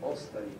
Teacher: But it's not ostavini or ostavini, but ostavi with stress on that first syllable